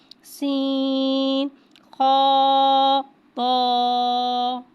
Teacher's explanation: سین کو ایک الف یعنی 3 حرکات کے برابر کھینچ کے پڑھیں گے. یہاں سین میں سیٹی کو ظاہر کر کے پڑھیں گے. خا کو ایک الف یعنی 2 حرکات کے برابر کھینچ کے پڑھیں گے. · تو کو ایک الف یعنی 2 حرکات کے برابر کھینچ کے پڑھیں گے. تو حرف مستعالیہ ہے، لہذا اس کی آواز حلق سے موٹی ادا ہوگی · خا حرف مستعالیہ ہے، لہذا اس کی آواز حلق سے موٹی ادا ہوگی